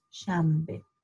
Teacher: In fact, it's spelled with an S, you know, sh sound, A-N-B. But if you try to pronounce an N before a B, often it comes out as an M.